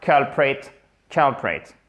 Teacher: Accent tonique sur la first syllabe.